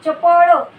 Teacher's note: तालव्य उच्चारात य चा भास असतो.